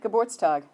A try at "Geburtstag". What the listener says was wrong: You just stopped after the Geburt.